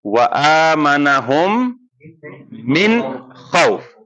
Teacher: بالکل لمبا نہیں کرنا ہے، کلیئر پڑھنا ہے، بالکل نون ساکین تنوین کو بالکل واضح کر کے پڑھنا ہے اور بالکل لمبا نہیں کرنا ہے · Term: اظہار